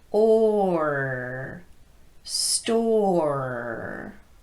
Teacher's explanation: IR sound a car car and in a word like store you have to drop the tongue for The O Part but then you're going to bring it back up high and connect with those teeth for the IR sound